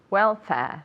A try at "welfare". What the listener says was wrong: Very good and very good pronunciation. Very English.